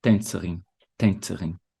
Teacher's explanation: Na sílaba tônica fica no início.